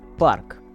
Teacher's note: aspiration should be eliminated completely